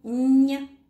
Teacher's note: Мягкость обозначаем вот такой запятой. Этот звук согласный. Звонкий. Мягкий. Мягкость ему придает буква Е.